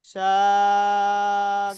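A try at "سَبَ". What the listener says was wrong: সা বলে টান দিচ্ছেন, সিন যাবার সা, হারাকাত টান হবে না। কেটে কেটে বানান করলে এরকম ভুল হবে না। সিন যাবার সা, সিনের উচ্চারণটা কি হলো? সা। বা যাবার বা, বার উচ্চারণ কি হলো? বা। তাহলে দুটি উচ্চারণ অ্যাডজাস্ট করবেন, সাবা।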